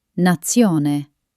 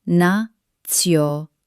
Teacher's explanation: Hear that sharp ts sound at the end? Unlike English, where it sounds soft, in Italy we want it crisp, rhythmic and clear.